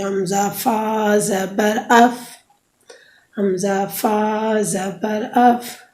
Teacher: دونوں دانتوں کی نوک جب نیچے کے ہونٹ کے اندر والے حصے سے لگے گی تو اس سے فا ادا ہوگی۔